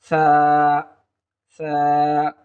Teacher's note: জিহুব্বার আগা সামনের উপর দুই দাঁতের আগার সঙ্গে লাগিয়ে দিলেই আমরা সা হরফটি পেয়ে যাব